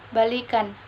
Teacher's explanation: bunyi ih berubah menjadi ih tinggi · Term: modifikasi vokal